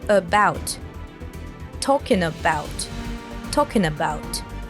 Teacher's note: we have a reduction of a nasal sound at the end of talking and have it merged with a schwa sound from about